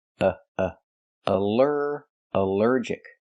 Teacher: Here the al is not pronounced all but pronounced uh like in cup and up because it's not stressed.